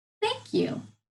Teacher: Stick that tongue between your teeth. Yeah, and then push some air out. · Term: digraph TH